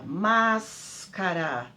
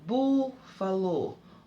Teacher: A antepenúltima sílaba é a mais forte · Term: proparoxítona